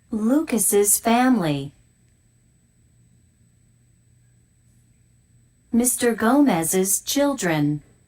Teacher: some words like lucas's and mr gomez's make an is sound it's an extra syllable